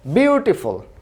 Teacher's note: বিউ এর উপরে জোর দেওয়া হচ্ছে, সুতরাং টি এটা আস্তে করে বলা হচ্ছে বিউটিফুল। এটা কিন্তু ঠ উচ্চারণ করা হচ্ছে না, বরং ট উচ্চারণ করা হচ্ছে।